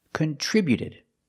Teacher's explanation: the T before the ED is between vowels, so it's a fast D.